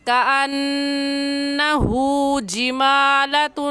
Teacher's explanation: کأنہ نون مشدد ہے، غنہ کر کے پڑھیں گے. ہا کے اوپر الٹا پیش ہے، اور الٹا پیش کو ایک الف کی مقدار کھینچ کر پڑھیں گے. پورا لفظ ایسے پڑھیں گے کأنہ جمالۃ. · میم کے اوپر کھڑی زبر ہے، ایک الف کے برابر کھینچیں گے